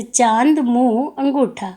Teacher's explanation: दूसरा है अनुनासिक। इसके उच्चारण में हवा नाक और मुंह दोनों से निकलती है